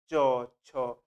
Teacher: দাঁতের একটু উপরে টাচ করছে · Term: তালব্য ব্যঞ্জন